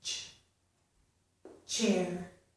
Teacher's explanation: But the sound we're talking about here also has sh, as in she. So we started with t, and we move into sh